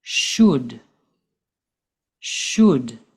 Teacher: We do not pronounce the L in the word should.